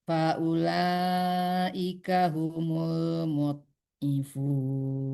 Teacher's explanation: mud di dalam aja bunyinya, jangan mantul.